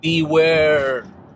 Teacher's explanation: ال R في آخر كلمة beware اللسان بيرجع ورا